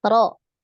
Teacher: Jadi jangan terlalu banyak takrir ya ketika mengucapkan huruf ro. Jadi berapa takrirnya? Satu kali ya, getarannya sekali aja.